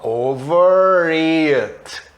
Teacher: O R está juntando com it